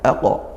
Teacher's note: falaq ini qaf sukun, nah maka kita baca mantul ya, dikuatkan aqo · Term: qalqalahnya qaf